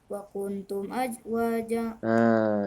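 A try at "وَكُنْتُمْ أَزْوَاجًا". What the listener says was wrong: Ihfanya kurang panjang. Wa kuntum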